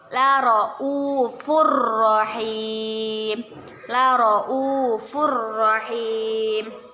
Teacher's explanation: Kita baca, kita masukkan, kita membacanya dengan dimasukkan ke huruf ro tapi tidak berdengung.